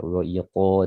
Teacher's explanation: Wa iqamis salah, di sini qaf tebal ya, makhrajnya dari pangkal tenggorokan ya, wa iqa, dan ini adalah kondisi paling tebal ya.